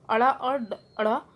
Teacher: इनका उच्चारण स्थान मूर्धा है, मतलब जो हमारे जो तालु होता है ऊपर का पार्ट वो है, इसका उच्चारण स्थान अड़ा और अड़ा उत्क्षिप्त व्यंजन कहलाते हैं। मतलब इसमें हमारी टंग जो होती है, जीभ अंदर को मुड़कर वापस सामने की तरफ आती है